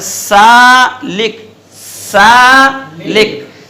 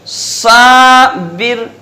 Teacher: दोनों सा की आवाज आ रही है मगर सीन बारीक रहेगी और साद मोटा रहेगा। जो लोग इस तरह से पढ़ देते हैं सौबिर सौबिर, तो ये गलत है।